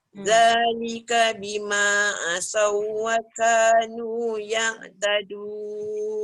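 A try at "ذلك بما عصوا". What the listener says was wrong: Sikit lagi tebalkan suat tu. Asawwaka.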